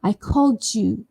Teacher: What happens when a D sound is followed by a Y sound? Something magical happens. The J sound is produced.